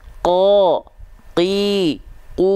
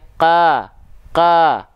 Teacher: nah seperti ini ya oke qo Qi qu aku nah karena pangkal lidah kita naik ke arah langit-langit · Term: pangkal lidah naik